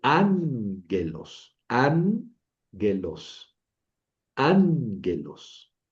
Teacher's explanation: la gama inicial, la primera, suena como ni.